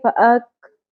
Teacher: جب بھی کاف اور تا باریک ہوتا ہے تو ہلکی سی تھ کی آواز کھ کی آواز آتی ہے